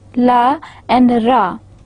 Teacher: you will feel that there is a slight, very slight obstruction of airflow, as well as there is a smooth flow of air without any blockage. So such sounds are known as liquids.